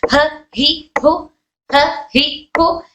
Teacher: सिफत हमस होने की वजह से इनके अंदर हवा आ रही है।